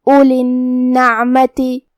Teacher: کلمت اولی میں یہاں واو ہے لیکن ہم واو کو ظاہر نہیں کریں گے، الف کو پیش سے پڑھیں گے پھر حرف اللام پڑھیں گے